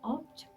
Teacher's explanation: ಅನ್ನ ಅಕಾರಕ್ಕಿಂತ ಕಡಿಮೆ ಮಾಡಿ ಶ್ವ ಅಂತಾರೆ ಅದು ಅನ್ನೋ ಸೌಂಡ್ ಮಾಡಿ ಹೇಳ್ತೀವಿ ಈಗ ಆಬ್ಜೆಕ್ಟ್ ಅಲ್ಲಿ ಆ ಅನ್ನ ಒತ್ತುತ್ತಾ ಇದ್ದೀವಿ ಜೆಕ್ಟ್ ಅಂತ ಹೇಳಲ್ಲ ಜಕ್ ಅಂತೀವಿ